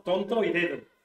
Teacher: La T y la D en español, interdentales, ¿no? Se posiciona la lengua entre los dientes